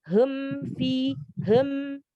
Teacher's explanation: Ketika kita tidak memonyongkan kedua bibir, maka tidak sempurna, maka terdengar menjadi hem fi hem.